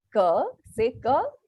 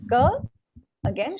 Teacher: the Cur related sounds are tantia or guttural they start at the back of the throat